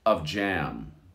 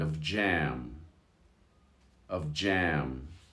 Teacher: The F and the J sort of merge into one sound